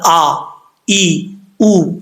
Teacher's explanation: حمزہ سختی سے پڑھا جاتا ہے، جھٹکے سے نہیں